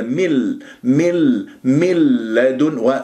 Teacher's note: ادغام بغير غنه راح اكل النون ما اسمع صوت للنون ابدا